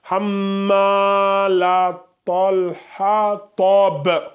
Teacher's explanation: quand tu dis hamma, faut que je sente qu'il y a un mad bilalif, tu vois. Hamma, tu vois, tu ouvres bien la bouche.